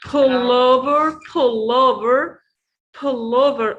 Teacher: we stress in the first syllable, pull.